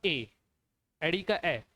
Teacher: जो कंठ और तालव्य दोनों आता है वो होता है आपका ए, एडी का ए। इसमें कंठ और तालव्य दोनों का इस्तेमाल किया जाता है।